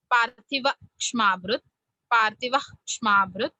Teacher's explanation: पार्थिव के बाद जो विसर्ग है, I am saying it little bit short, पार्थिव क्ष्माभृत, पार्थिव क्ष्माभृत, half pronunciation.